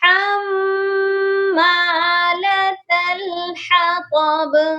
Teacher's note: وامرأتہ حمالۃ الحطب، حما کی میم مشدد ہے اور میم مشدد پر ہر صورت میں غنہ ہوتا ہے. حطب، اس کی طا کو موٹا پڑھنا ہے اور با پر قلقلہ کرنا ہے